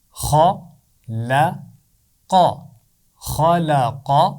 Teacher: لام کی آواز موٹی نہیں ہے، خا اور قاف کی آواز موٹی ہے، لام کی آواز کو باریک پڑھنا ہے بیچ میں.